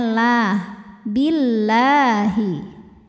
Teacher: harokat huruf sebelumnya kasrah. Maka lam dibaca secara tipis. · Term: tarqiq